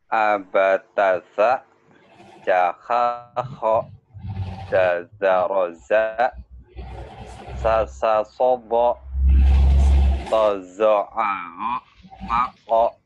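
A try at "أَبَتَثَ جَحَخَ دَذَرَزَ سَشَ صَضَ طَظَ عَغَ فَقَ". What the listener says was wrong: Ya, tinggal sinnya ya. Sasha, sasha, sin berarti ya.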